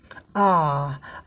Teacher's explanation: जब हम आ बोलते हैं तो हमारा मुंह ज़्यादा खुल जाता है।